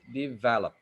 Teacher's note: the second syllable is louder because it is where the stress is